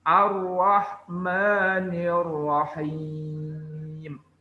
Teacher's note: ro-nya tebal, tafkhim. Dan jangan terlalu menggeletarnya. Ar-Rah, nggak usah.